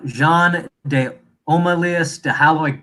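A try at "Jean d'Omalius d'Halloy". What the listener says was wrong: De Alloy. They don't pronounce the H.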